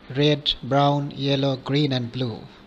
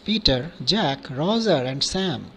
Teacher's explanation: rising intonation is also used while listing things